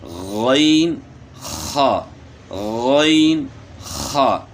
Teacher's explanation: دونوں کو جو ہے گلے کے شروع سے ادا کرنا ہے، یعنی ادنی حلق سے، یعنی حلق کا وہ حصہ جو منہ کی طرف ہے۔